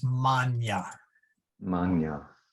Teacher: ecclesiastical Latin, it I don't know what the word is it gets swallowed, or I don't know what the right term is, but it becomes like a Y sound, like canyon